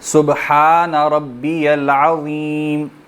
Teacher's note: زبان کو دونوں دانتوں کی بیک پہ لگانا ہے, ٹھیک ہے, اور موٹا پڑھنا ہے, باریکی کے ساتھ بھی پڑھنا ہے اور موٹا پر کر کے بھی پڑھنا ہے.